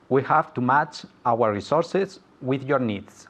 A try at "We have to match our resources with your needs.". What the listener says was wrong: Okay, very well pronounced again. Very well pronounced.